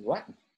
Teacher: The word for water is vatn, right? Where you have this devoiced N over here, right? You don't have an R at all, right?